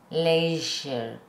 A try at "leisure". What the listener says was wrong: You're saying shh. You have two variables. You have two variables. You have forward, back, vibrate, not vibrate. So S is back, no vibrate. Z is back, vibrate. Sh is forward, no vibrate.